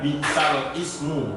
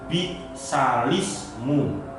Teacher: lamnya dikasroh, lamnya dikasroh. bukan bi'sal ismu, hamzahnya menjadi hilang.